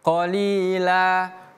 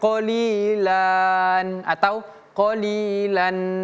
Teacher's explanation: Tanwinnya tidak dibaca, yang dibaca adalah tanda panjangnya. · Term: mad iwad